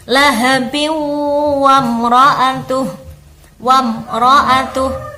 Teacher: Lahabin bertemu dengan wamro'atuhu, namanya bacaan idgham bi gunnah. Jadi ada tanwin bertemu dengan huruf wawu, tanwinnya harus kita masukkan kepada huruf setelahnya